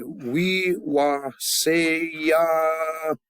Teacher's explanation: Sing-song means you have tones going up and down. We don't. We just accent the last syllable.